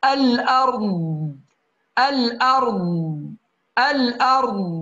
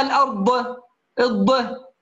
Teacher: ألا نقلقل صوت الضاد، تمام يا أحباب، ونسير زمن قصير أقل من حركتين في حرف الضاد. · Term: استطالة